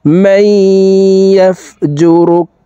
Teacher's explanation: এই মিম তাসদিদওয়ালা ইয়ার সাথে গুন্নার সহিত মিলাইয়া পড়ব, মাঝখানে জজমওয়ালা নুন বাদ পড়ে যাবে।